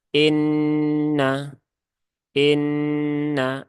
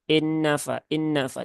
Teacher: Nun bertemu dengan Nun maka ini ditahan dulu ya ini ee ditahan keluarkan ghunahnya Ya ditahan tiga rakat jangan terburu-buru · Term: Nun yang bertasdid